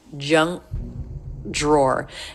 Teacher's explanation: the back part of the tongue touching the soft pallet junk drawer and then rather than releasing that he just goes